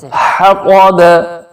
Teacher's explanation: حلق کے درمیان سے نکلے گا یہ والا ح, اوپر تھوڑا سا سانس لے کے جائیں اور پھر ٹھنڈا سانس اپنا نیچے نکالیں ایسے.